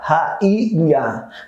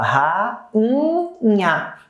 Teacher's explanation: Você não fala ra-i-nha, você fala ra-nha. Então é como se esse seu i não ficasse sozinho, é como se ele ficasse nasalizado por causa do NH aqui. Então, para a gramática, se houver um NH depois, a regra dos hiatos será desconsiderada.